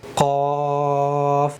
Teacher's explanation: منہ کے اندر ہوا بھر کے زبان کی جڑ اوپر کے تعلق کی طرف اٹھا کے قاف